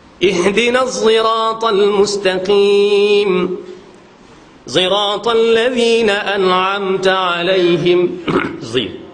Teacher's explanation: Ismam makna campur di antara sad dengan zai. Zi seolah-olah bunyi macam za. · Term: ismam sad